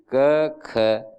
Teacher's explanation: श्वास निकल जाता है और वो घोष नहीं होता है, गूंज नहीं होती है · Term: अघोष